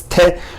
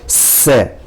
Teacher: Ashkenazim do pronounce it differently. Taf with a dagesh is pronounced as te, but a taf without dagesh is pronounced as se.